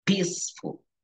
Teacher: Porque el fonema de la E y la A queda como I, peaceful.